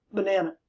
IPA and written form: bənænə (banana)